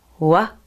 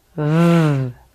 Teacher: the W sound is more relaxed than the V sound and also there are no teeth involved let's compare the two take a look w v w v